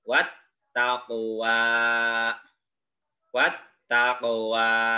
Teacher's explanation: kopnya dipantulkan karena termasuk huruf Qalqalah